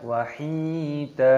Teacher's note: Hi panjangkan haknya, ada ya sukun matobi'i dipanjangkan dua ketukan, wahida. Huruf dalnya di sini dibaca panjang, mata iwad, jadi jangan dibaca wahidan, salah.